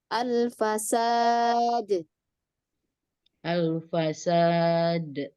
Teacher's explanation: Dan untuk dal, qalqalah, jangan diakhiri dengan hamzah ya.